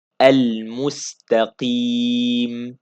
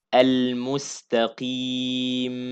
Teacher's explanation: Don't stress on the meem to not be a ghunnah. Don't say al mustaqim.